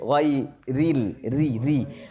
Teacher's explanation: Tak, jangan tebalkan ra baris bawah nipis.